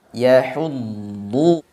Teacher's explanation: Makhrajnya memang panjang, kemudian juga suaranya memang dialirkan lebih panjang daripada huruf yang lain. Jadi dialirkan suaranya dulu dan ditebalkan, karena dia isti'la juga itbaq. Yahuddu, baru kemudian didhammahkan dengan mengonyongkan mulut.